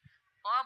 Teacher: प बोलते हैं तो हमारे होठ आपस में स्पर्श करते हैं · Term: ओष्ठ